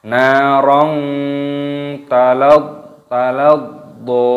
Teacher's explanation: Narong, fathah tanwin bertemu dengan huruf ta, hukumnya dibaca ikhfa, disamarkan.